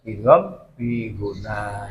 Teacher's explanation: Ya dimasukkan dan didengungkan itu namanya amun sedikit agak lama sedikit ya dengungnya agak lama dan harus mingkem